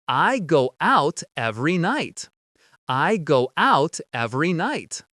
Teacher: your tongue is at the top of your mouth. You're about to make the T sound, but no air goes through, so it's just stopped at the top of your mouth. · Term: cut off the t